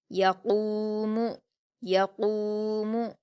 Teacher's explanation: قاف پر واو مدہ ہے، اس کو 2 حرکات کھینچ کر پر پڑھیں گے۔